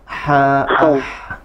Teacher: Lebih ditekan ya ke tengah tenggorokan.